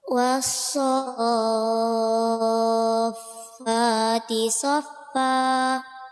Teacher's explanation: Al bertemu sodun. Cara bacanya bagaimana? Diidghamkan tanpa dengung.